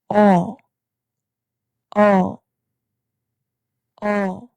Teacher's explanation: Your lips make a small circle, but the sound is short and light.